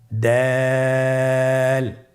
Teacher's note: জিহ্বার আগা সামনের উপরের 2 দাঁতের গোড়ার সঙ্গে লাগিয়ে উচ্চারিত হয়